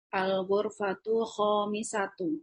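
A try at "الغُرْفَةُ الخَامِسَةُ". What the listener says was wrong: Ahsanti. Masya Allah.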